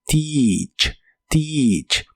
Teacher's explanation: Las letras e a de esta palabra se pronuncian como una i larga o doble y suena como teach.